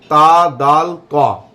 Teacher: जब हमारी ज़बान का सिरा ऊपर वाले दांतों की जड़ से मिलता है, ऊपर के जो दांत हैं उनकी जो जड़ है, जब हमारी ज़बान का सिरा उससे टकराता है तो उस सूरत में ता दाल क़ा, ये 3 हर्फ अदा होते हैं।